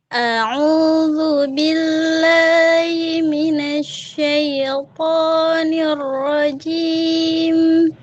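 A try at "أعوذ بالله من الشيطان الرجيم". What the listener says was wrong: 75, tapi salahnya masih sama. Salahnya itu masih huruf ro. A'udzu billahi minasyaitonir rajim. Nah, ro-nya masih tipis.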